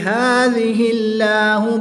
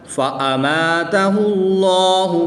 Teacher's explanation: جلالت اللہ عز و جل کے لام سے پہلے حرف پر پیش ہے تو اس لام کو پر یعنی موٹا پڑھیں گے، باریک نہیں پڑھیں گے